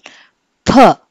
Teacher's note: ఫ అంటే నోట్లో గాలి నింపుకుని తర్వాత మనం సడన్గా వదులుతున్నాం. ఇలా మనం ఫస్ట్ గాలిని కంప్లీట్గా బ్లాక్ చేసి తర్వాత అబ్రప్ట్గా రిలీజ్ చేస్తే వచ్చే సౌండ్స్ని ప్లాసివ్స్ అని చెప్పి అంటాం.